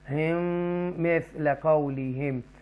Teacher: اور یہ ادغام شفوی ہے، ڈبل میم آ رہی ہے، یہاں پر آپ گنہ کریں گے